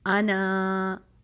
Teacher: قال انا، 2 حرکت، انا. ٹھیک ہے، یعنی وقف کرتے ہوئے، سٹاپ کرتے ہوئے آپ نون کے ساتھ جو الف لگا ہے اس کو پڑھیں گی